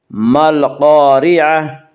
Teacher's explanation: قاف کو پر پڑھیں گے، قاف حروف مستعلیہ میں سے ہے، حروف مستعلیہ 7 ہیں جن کا مجموعہ خص ضغط قز، یعنی خا صاد ضاد غین طا قاف ظا، یہ حروف ہمیشہ ہر حال میں پر پڑھے جاتے ہیں۔